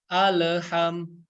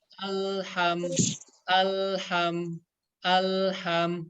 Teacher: huruf lam ini sama ya, nggak memiliki sifat qalqalah. Jadi cara bacanya nggak boleh dipantul-pantulin ya.